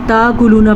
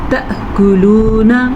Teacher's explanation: حمزہ پہ جب ساکن آ گیا تو جھٹکا پیدا ضرور ہوگا